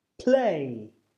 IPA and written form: pleɪ (play)